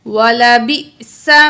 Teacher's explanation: حمزہ ایسا ہے جب ساکن ہو تو اس میں جھٹکا ہوتا ہے